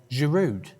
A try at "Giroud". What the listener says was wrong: Just without the D. on the end. I know, but it's a silent D.